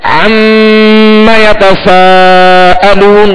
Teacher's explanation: मीम पर क्या है, तशदीद है, तो इसमें गुन्ना करेंगे। तो नून और मीम जब भी मुशद्दद हो तिलावत के दौरान, जब भी मुशद्दद होंगे तो इनमें एक अलिफ की मिकदार में गुन्ना करेंगे।